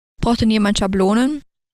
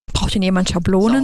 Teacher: we have more breathy voice in the beginning of the utterance in German